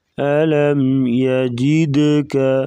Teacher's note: دال ساکن ہے تو یہاں پر قلقلہ کریں گے۔